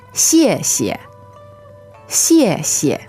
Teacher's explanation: now that's a 4th tone and then a neutral tone. So you'll notice that we hit the first syllable a little harder, right?